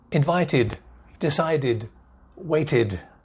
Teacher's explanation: there's a d ending at the end, but there's an extra sound. There's an I in there.